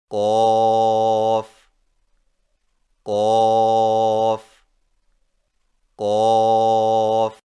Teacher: قوف کی ادائیگی میں زبان کی جڑ کو کوے کے متصل تالو پر لگا کر موٹی آواز میں پڑھیں